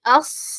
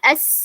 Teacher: okay അതുപോലെതന്നെ ആ ഒരു വിസിലിംഗ് സൗണ്ട് എന്തായാലും ഉണ്ട് സീനും എസ് എസ് സ്വാദ് ഹെവി ലെറ്റർ ആയതുകൊണ്ട് അതിന്റെ ആ സൗണ്ട് എന്തായിരിക്കും അസ് ഹെവി ആയിരിക്കും സീൻ ആകുമ്പോൾ സീൻ ലെറ്റർ ആയതുകൊണ്ട് തന്നെ എസ് അതിന്റെ സൗണ്ടും ലൈറ്റ് ആയിരിക്കും അതാണ് ഈ രണ്ട് ലെറ്റേഴ്സും തമ്മിലുള്ള ഡിഫറൻസ് ബാക്കി എല്ലാം സെയിം ആണ്